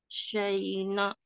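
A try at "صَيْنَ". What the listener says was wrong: Bukan saina, soina. Huruf sod, Bu. Jangan sampai ada saina. Soina. Soina.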